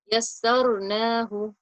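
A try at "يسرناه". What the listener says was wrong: Okay, so initially you resonated it too long. So yassarnahu, yassarnahu. Just lift up your tongue. Concentrate on lifting up your tongue.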